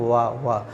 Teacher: हवा स्वर के समान मध्य से निकलती है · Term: अर्ध स्वर